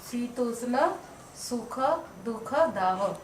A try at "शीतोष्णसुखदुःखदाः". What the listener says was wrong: Very good, दाह, very good.